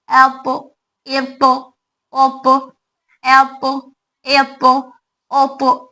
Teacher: हवा की आवाज बिल्कुल नहीं, क्योंकि इसके अंदर सिफत जहर है, तो आवाज बुलंद होगी, हवा बाहर नहीं आएगी। · पौ में खलखला की आवाज आएगी, एक एक्स्ट्रा वॉइस, क्योंकि इसके अंदर छठवीं सिफत सिफत गैर मुतजाद की खलखला पाई जा रही है।